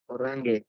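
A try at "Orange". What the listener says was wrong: ഒറാങ്ങേ. NG വരുമ്പോ ngോയാ. മലയാളത്തിലെ ngോ ഇല്ലേ? ഒറാങ്ങേ.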